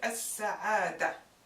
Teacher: the sound of L, of the definite article, with the word as-sa'ada, merging in that of the next following letter, which is an S. This phenomenon appears with solar letters.